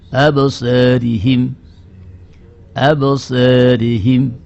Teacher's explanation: Imalah sughra itu adalah bunyi yang cenderung kepada harakat fathah. Bunyi pertengahan antara fathah dengan kasrah, tetapi lebih cenderung kepada harakat fathahnya. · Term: taklil